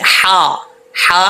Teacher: اس ہا کا تعلق حلق سے ہے، سینے سے نہیں ہے